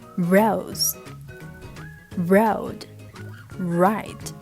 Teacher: you have to round your lips, rose, and then make sure that your tongue is in the very middle part of your mouth